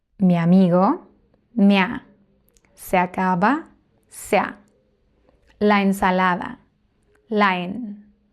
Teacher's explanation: the first word, which has only one syllable, joins with the first syllable of the second word